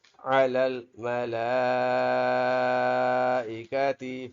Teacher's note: لام کے اوپر بڑا مد ہے، بڑی مد ہے، ٹھیک ہے، اس کو کھینچ کر پڑھیں گے